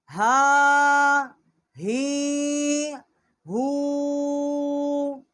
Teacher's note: بڑی ہا ہے، اقصائی حلق سے اس کا مخرج ہے۔ ہا کھڑا زبر ہا، ہا کھڑی زیر ہی، ہا الٹا پیش ہو، ہا ہی ہو۔